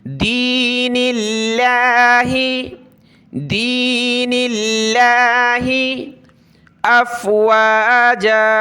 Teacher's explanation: لفظ اللہ سے پہلے والے حرف پر کسرہ ہے، زیر ہے، تو لفظ اللہ کو باریک کر کے پتلا کر کے پڑھنا ہے، موٹا نہیں پڑھنا